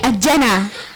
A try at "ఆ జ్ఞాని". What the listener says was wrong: అజ్జాని కాదు, ఆ జ్ఞాని. కొంచెం గ్యాప్ ఇవ్వి.